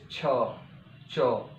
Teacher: इन व्यंजनों के उच्चारण जीभ पहले उच्चारण स्थान का स्पर्श करती है, फिर उसके इतने निकट रह जाती है कि वायु घर्षण करते हुए बाहर निकलती है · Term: स्पर्श संघर्षी व्यंजन